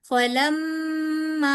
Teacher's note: मीम पे पहले मीम मुशद्दद की वजह से यहाँ पे पहले गुन्ना होगा, ठीक है। और फिर आगे अलिफ मद्दा के ऊपर, ये बड़ी मद है तो फिर आगे आप बड़ी मद करेंगे, फलम्मा, ठीक है।